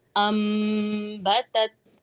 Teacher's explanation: الف کو حمزہ کو واضح پڑھیں گے۔ انبتت، با ہونٹوں کے گیلے حصے سے اور تا باریک پڑھا جائے گا۔